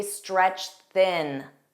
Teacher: And notice that pronunciation, because we have stretched that ends in a T sound, that ED is pronounced as T, but then thin begins with an unvoiced TH, so we're going to combine that together and say stretched thin.